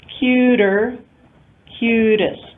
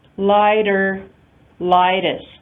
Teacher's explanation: And if you remember our rule for the flap T in English, we said flap T occurs between vowels. So all of these are instances where the T occurs between two vowels and therefore is produced as a flap allophone.